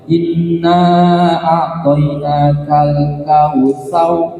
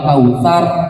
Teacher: Yang ada getaran itu kalau dibaca tarkik. Tapi kalau misalnya dibaca tafkhim maka nggak boleh ada getaran lidahnya, harus tebal